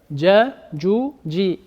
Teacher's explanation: le makhraj, la sortie de lettre de harf al-jim, c'est le milieu de la langue avec le palais supérieur